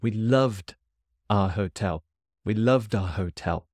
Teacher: I'm putting a lot of emphasis on love because Kat's asking for recommendations.